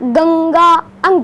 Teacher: देखो अनुस्वार का उच्चारण नाक से होता है।